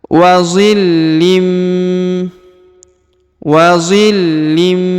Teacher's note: ditahan dan ditekan dua harakat serta didengungkan